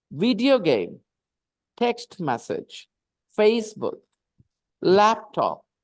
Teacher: compound noun the stress is on the first part